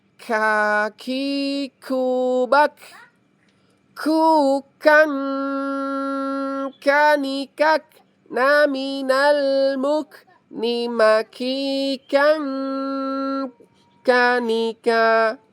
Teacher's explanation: Kaf itu bukan huruf qalqalah, jadi nggak boleh dipantulkan teman-teman. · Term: huruf kaf